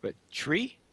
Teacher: You turned the T into a ch sound.